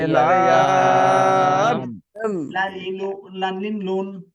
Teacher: জিহ্বার আগার কিনারা সামনের উপরের দাঁতের মাড়ির সঙ্গে লাগাইয়া